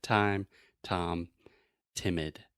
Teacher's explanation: the very front part of your tongue is touching the top of your mouth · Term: true T